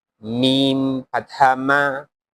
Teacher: While reading mim, the both lips are touched together